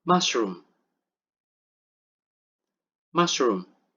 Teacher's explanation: Meskipun ada dua huruf O, it doesn't mean that it requires long U. It only uses short U.